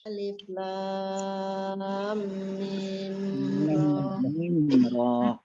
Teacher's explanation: Kalau yang lam panjang, kemudian dengung, didengungkan, baru ke mim. Kalau mim hanya panjang aja. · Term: mukhaffaf